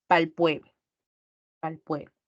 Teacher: la R también suele omitirse, incluso en las canciones que ustedes escuchan